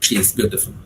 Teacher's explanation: I have made a very ordinary statement, she is beautiful, okay. I have used a falling tone.